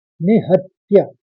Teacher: चरणबद्ध तरीके से समझिए। निहत्य, पहले चरण में निहत्य ह के ऊपर आघात है तो निहत और फिर त्य